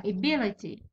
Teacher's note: ايفولوشن، ابيليتي، اي بي لي تي، ابيليتي هذا هو الثاني، البي هذا اللي فيه الشده هو الثاني، so it's in the second syllable